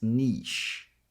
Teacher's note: the second syllable is pronounced as an sh sound as in she. So it's niche.